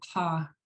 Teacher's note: It will be an acute sound, whereas the ha is like a fricative. You're just creating friction and it'll sound like gravel rolling around.